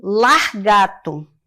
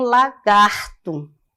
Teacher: Deslocamento do R no interior da sílaba.